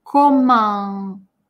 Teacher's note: Следующий звук после ко, а носовое.